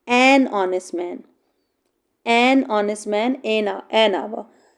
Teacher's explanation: they have H in the beginning, but actually they are giving the sounds of O, not giving the sound of H.